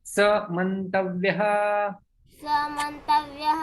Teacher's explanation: यहाँ पर जो है विसर्ग का लोप हो जाता है, संधि बनती है